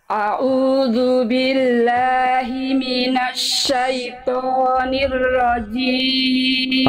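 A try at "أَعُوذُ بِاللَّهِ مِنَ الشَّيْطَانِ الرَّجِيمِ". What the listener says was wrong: Oke, Bunda, huruf A-nya tinggal dikuatkan lagi sedikit. A'udzu billah dari tengah tenggorokan. A'udzu billahi minasyaitonir rajim.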